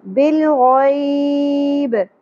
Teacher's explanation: اگر ہم نے یہاں پہ وقف کرنا ہے تو با ساکن ہو جائے گا اور قلقلہ ہوگا